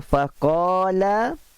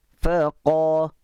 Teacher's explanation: Alif yang dibaca secara tebal, tafkhim. Kerana sebelumnya ada huruf tafkhim. Macam contoh faqala, alif ni ditebalkan bunyinya kerana selepasnya terdapat huruf tafkhim. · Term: Alif mufakhamah